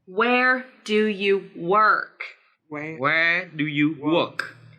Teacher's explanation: we want to stress two words in this sentence, where and work.